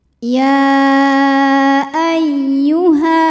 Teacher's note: Maka dibaca panjang ya-nya boleh 4 boleh 5 harokat. · Ya tasydid yang tidak didahului tanwin atau nun sukun maka cukup dibaca menggunakan nabar. Jadi agak dinaikkan intonasi suara kita. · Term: mad jaiz munfasil